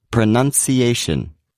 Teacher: the a is the main stress and the U is the secondary stress